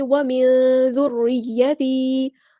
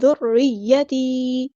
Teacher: زال باریک light letter ہے، را بھی یہاں پہ باریک لائٹ لیٹر ہے